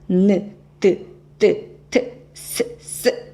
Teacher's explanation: 혀끝이 윗잇몸에 닿았다가 떨어지는 소리입니다.